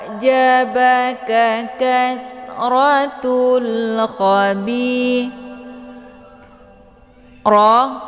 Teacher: Hukum bacaannya adalah tafkhim. yaitu bacaan tebal karena ro ini adalah barisnya fathah.